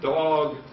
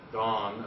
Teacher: in the word dog, do we store the fact that the vowel is oral, whereas in the word dawn, do we store the fact that the same vowel is nasal, dawn, as opposed to dog, aw?